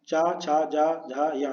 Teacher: चा, छा, जा, झा, या, ये तालव्य हुए